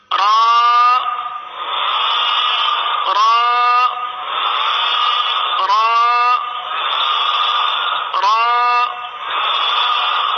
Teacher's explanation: را کے لیے زبان جو ہے یہ دانتوں کی تالو کی جانب والے حصے کی طرف مڑتی ہے اور سیدھی ہوتی ہے، اس طرف جاتی ہے اور سیدھی ہوتی ہے۔ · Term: مخرج